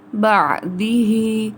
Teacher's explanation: عین کی آواز کو حمزہ سے نہیں بدلیں گے، بعدی ہی کی بجائے بعدی ہی ادا کریں گے.